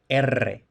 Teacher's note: en español una R inicial es siempre vibrante, lo que tradicionalmente se ha llamado vibrante múltiple